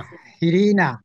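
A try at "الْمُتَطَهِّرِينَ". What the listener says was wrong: তহিরিনা, তহিরিনা। না, মুতা তহিরিনা। মুতা, প্রথমটা হবে তা, পরেরটা হবে ত। তা, ত। মুতা, মুতা তহিরিনা, হ্যাঁ, গুড।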